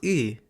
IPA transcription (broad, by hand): ɨ